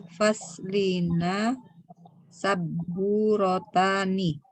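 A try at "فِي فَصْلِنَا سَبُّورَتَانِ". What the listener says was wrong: Jayyid, Masya Allah.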